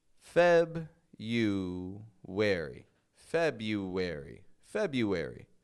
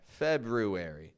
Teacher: there isn't there shouldn't there be an R after the B guess what I don't pronounce that R uh for me that's a silent R · in this day and age we drop that first R and we say just febuary